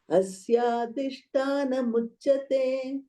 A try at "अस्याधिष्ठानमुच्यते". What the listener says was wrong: So Tana, no? Thana. Adhishthana, Tha is a Mahaprana. Adhishthana. Tha, Mahaprana. With the power. Asya. Asya no. Asya. Asyadhishthanamujyate.